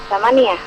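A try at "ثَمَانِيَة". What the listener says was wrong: Samaniyah. Iya, panjang pendeknya diperbaiki.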